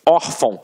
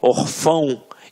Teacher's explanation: reparem que a sílaba tônica está na penúltima sílaba. Por isso é uma paroxítona.